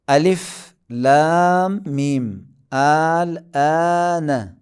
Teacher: مد لازم میں کشش کی مقدار فقط 6 حرکت کے، 2 3 4 نہیں، بس 6 حرکت ہی کھینچنا ہے۔